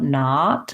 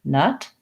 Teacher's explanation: you want to feel more open on knot and more relaxed on nut